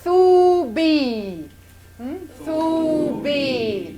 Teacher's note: Two nice long, a long oo and a long ya.